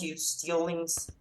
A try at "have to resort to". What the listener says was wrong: Have to resort, not have to, but have to. Have to resort to. Have to resort to. So some connected speech, but it's not maintained or sustained. So if you're looking at band 9 and 8, we want this sustained use of connected speech.